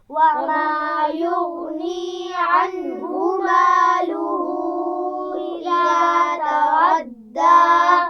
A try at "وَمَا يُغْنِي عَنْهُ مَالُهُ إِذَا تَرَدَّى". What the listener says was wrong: مالوہو کے ہاں پر چھوٹی مدد تھوڑا سا زیادہ کھینچ کر پڑھیں گے. عنہ نون ساکن کے بعد ہا ہے، آپ کو پتہ ہے یہاں پر غنہ نہیں ہونا، ٹھیک ہے.